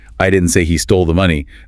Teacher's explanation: the intonation on I implies someone else said it